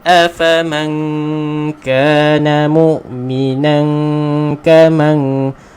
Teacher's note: nun mati bertemu kaf, ikhfa hakiki, dengung dua harakat